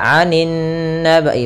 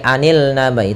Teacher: lam yang dia tertulis tapi tidak dibaca, langsung ke huruf setelahnya. Maka anin nabai, bukan lagi anil nabai, tapi anin nabail azim yang diidghamkan, maka dinamakan dengan alif lam syamsiyah.